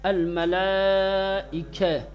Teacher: بڑی والی مد ہے تو اس کو کیا ہے؟ کھینچیں گے، چار حرکت کے برابر